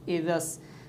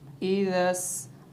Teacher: اب یہ بیچ والا جو الف لام ہے یعنی سین کے ساتھ جو ملا ہوا ہے یہ حذف ہو گیا، تو یہ بن جائے گا ایذس۔ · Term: خالی حرف